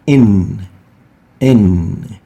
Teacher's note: you can feel your tongue touching the hard palate just behind your incisors teeth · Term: noon